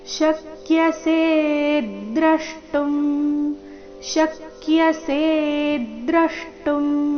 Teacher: ಶ ಮೇಲೆ ಆಘಾತ ಸೆ ದೀರ್ಘ ಹೇಳಿ ನಂತರ ಆಘಾತ ಮುಂದೆ ದ್ರವ ಮೇಲೆ ಸಹ ಆಘಾತ ಬರಬೇಕು ಶಕ್ಯಸೇದ್ರಷ್ಟುಂ ಶಕ್ಯಸೇದ್ರಷ್ಟುಂ [ಸಂಗೀತ]